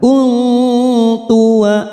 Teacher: nun sukun bertemu ta ikhfa hakiki kita samarkan bunyi nun sukun 3 harakat